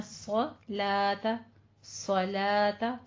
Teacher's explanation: सौत पुर पढ़ेंगे, लाम बारीक रहेगा